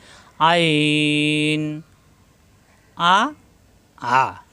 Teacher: আইন কন্ঠনালীর মাঝখানে চাপ সৃষ্টি হবে।